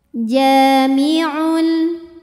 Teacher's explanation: harakat inallah ja ja mii dahiri karena ada Alif didahului fathah maka dibaca jimnya panjang dua harakat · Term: mad tabi'i dhahiri